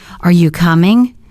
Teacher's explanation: The pitch rises slightly at the end